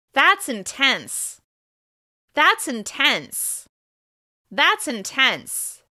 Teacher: Remember, you'll stress the adjective and then fall afterwards.